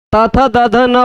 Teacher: त, थ, द, ध न बोलने के लिए दांत पर टच कर रहे हैं